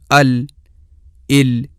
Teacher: زبان کا دائیں اور بائیں دونوں طرف سے تھوڑا سا کنارہ جہاں زبان کا ابتدائی اوپر والا حصہ ختم ہوتا ہے، جب اپنے بالمقابل اوپر کے جبڑے یعنی تالو سے ٹکرائے گا تو وہاں سے لام ادا ہوگی